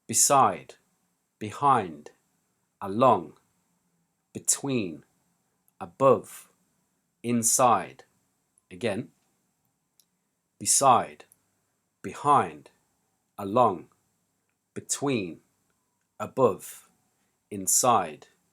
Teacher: stress the second of the two syllables